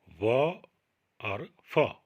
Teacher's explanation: नीचे का होंठ ऊपर के दांतों से टकराकर छिटक कर बाहर निकलता है, इसलिए इसमें होंठों का भी प्रयोग होता है और दांत का भी प्रयोग होता है, इसलिए इनको दंतोष्ठ्य वर्ण कहा जाता है उच्चारण की दृष्टि से।